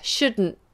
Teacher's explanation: Tongue goes up on D, should, and then you release the NT up there. Shouldn't. The tongue stays up.